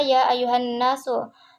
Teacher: Nun bertasjid itu gunnah